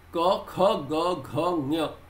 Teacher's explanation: ka and ga do not have so much of air coming out of the mouth as the kha, gha